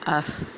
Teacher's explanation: اسی طرح حمزہ زبر ثا اس، حمزہ زبر ثا اس، آپ کی زبان کی نوک آپ کے اگلے دانتوں کے جو ہے وہ کنارے سے لگ رہی ہے، سامنے والے دو دانتوں کے کنارے سے لگ رہی ہے، تو یعنی ہمیں یہاں سے ثا کا مخرج معلوم ہو گیا۔